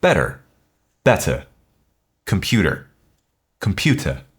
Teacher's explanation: In British RP, the T is not flapped. It keeps its strong aspirated or breathy sound.